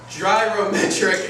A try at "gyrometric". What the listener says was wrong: Gyro, not dryro.